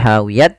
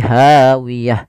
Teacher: maka dia ganti bukan lagi hawiyat tapi hawiyah